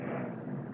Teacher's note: alif lam qamariyah Lami disini dibaca jelas